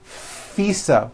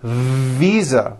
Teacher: i said fisa with an unvoiced f i should have said visa with a voiced v